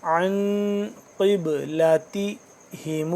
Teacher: مِنَ النَّاسِ ما وَلَّاهُمْ، وَلَّاهُمْ عن، عین نون زبر عن، نون یہاں پہ ساکن ہے تو ہم اس کو کیا کریں گے؟ اخفا کریں گے